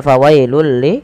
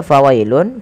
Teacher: Fawailul ya awalnya fawailun karena bertemu dengan huruf lam maka tanwinnya dimasukkan ke huruf lam dan diganti dengan huruf lam. Maka inilah yang kita namakan dengan bacaan idgham. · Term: bila ghunah